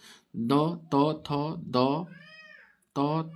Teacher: द, त, थ, द, त, थ, द किस पर जा रहा है? जीभ, जिह्वा का जो उच्चारण है, तो इसका उच्चारण जा रहा है दंत यानी दांत पे